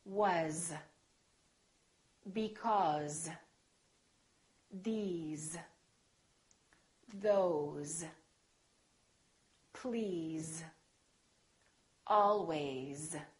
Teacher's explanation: very common words that we use all the time that are spelled with an S and pronounced with the Z sound